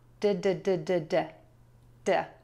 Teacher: This is actually a flap t which I like to teach as a really fast d.